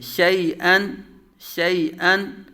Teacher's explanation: شین متحرک یا ساکن سے پہلے زبر یالین، حمزہ تنوین منون، دونوں کو بغیر کھینچے بغیر جھٹکا دیے